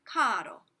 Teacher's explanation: a and o are surrounding the r that means you flip it